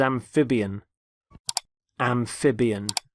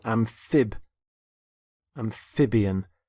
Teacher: notice the stress on the middle syllable